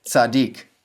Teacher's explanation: The second syllable de is closed and accented. So it has the long vowel in this case the unchangeable long vowel because that first syllable is protected by that doggishforte in the second root letter. · The first syllable, tzad, is closed and unaccented, so it has a short vowel. The second syllable, dik, is closed and accented, so it has the long vowel, in this case, the unchangeable long vowel.